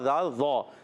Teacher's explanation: ذال کا مخرج یاد رکھیں، زبان کا سرا اوپر کے دانتوں کے اندرونی کنارے سے